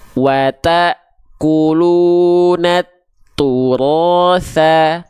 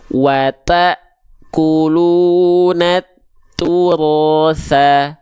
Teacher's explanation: Pastikan dia mengalir nafasnya. Ya, harus ada aliran nafas karena sifatnya tadi namanya adalah hams, mengalir nafasnya.